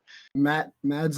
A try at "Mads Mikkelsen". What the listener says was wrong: Or sorry, it's Mads Mikkelsen. That's how you actually pronounce it. Mass. Not Mads.